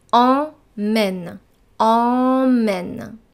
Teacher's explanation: Donc on utilise la voyelle nasale en. We're using the nose here.